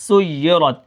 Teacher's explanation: را کو موٹا کر کے پڑھیں گے اور سین کو یا کے ساتھ ملا کر پڑھیں گے اور یا اپنی حرکت کے موافق پڑھی جائے گی.